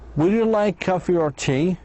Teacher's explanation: in yes no question, the answer is yes or no. The speaker's voice goes up two times.